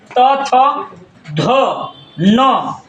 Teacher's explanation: त थ ध न का उच्चारण स्थान है दंत